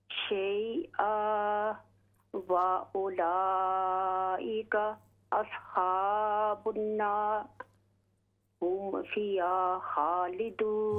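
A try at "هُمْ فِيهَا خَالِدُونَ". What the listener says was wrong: हुम फीहा, फिया, फिया पढ़ते हैं ना तो हा क्लियर नहीं हो रही। हुम फीहा खालिदून, खालिदून।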